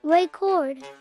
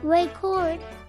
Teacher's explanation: If you stress the first syllable, record, it's a noun, like a vinyl record. If you stress the second syllable, record, it's a verb, meaning to tape something.